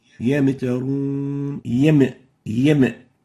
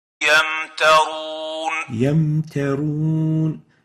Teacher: We don't say yam. So there should be no qalqala given to the Mim